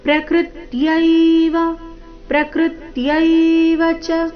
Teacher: ಪ್ರಕೃತ್ಯವ ಶಬ್ದದಲ್ಲಿ ಕೃ ಮೇಲೆ ಆಘಾತ ಬರಬೇಕು